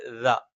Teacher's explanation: നാവിന്റെ അറ്റം മേലെ മുൻപല്ലിന്റെ താഴ്ഭാഗം